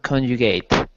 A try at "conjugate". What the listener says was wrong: Good, nice pronunciation of conjugate.